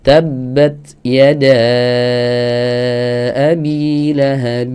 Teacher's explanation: jadi yang betul cara ngucapkan huruf ta ketika dalam keadaan sukun Munculkan hamsnya leluasa